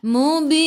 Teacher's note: matikan dengan huruf nun, hujung lidah menyentuh gusi atas.